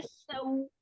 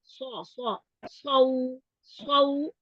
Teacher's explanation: सीन की आवाज जो है ना होती है ना बारीक होती है और जो स्वाद की आवाज होती है ये मोटी होती है